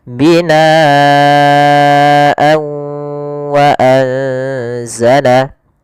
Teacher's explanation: Kalau di sini huruf setelahnya adalah huruf waw, maka tanwinnya kita masukkan kepada huruf waw kemudian ditahan gunnahnya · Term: idgham bi gunnah